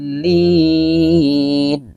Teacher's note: Cara bacanya itu, ya, mad tabi'inya, ya, dipanjangkan dulu sampai 6 harokat, baru ditasdidkan ke huruf atau kata yang di depannya yang bertasdid, ya. Huruf hijaiyah yang di depannya bertasdid di sini adalah lam. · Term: mad lazim mutsakkal kalimi